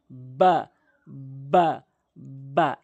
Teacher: এরপর আসুন বা, দুই ঠোঁটের ভেজা অংশ, দুই ঠোঁটের যে ভেজা অংশটি রয়েছে মিলিত করবেন, বা বা বা, এভাবে উচ্চারণ করবেন।